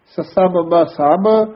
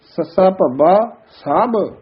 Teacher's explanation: ਬਬ ਜਿਹੜਾ ਹੈ ਉਹ ਪੋਲਾ ਬੋਲਿਆ ਜਾਂਦਾ ਹੈ ਭਬਾ ਥੋੜਾ ਭਾਰਾ ਬੋਲਿਆ ਜਾਂਦਾ ਹੈ।